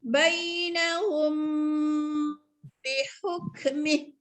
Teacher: Mim mati bertemu dengan ba. Kena baca dengung. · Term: ikhfa syafawi